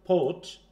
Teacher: we must aspirate the p